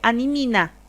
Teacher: todas las palabras las transforma en nm y suena nasal la pronunciación